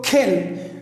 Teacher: the tongue goes back, fine, to the soft palate. To the soft palate, and it is articulated, it is produced from there, from the end of the mouth. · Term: k sound